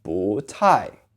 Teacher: 不 by itself is said with a fourth tone. But when it's in front of another fourth tone like 太, it becomes a rising tone.